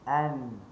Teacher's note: Huruf nun hujung lidah di di langit.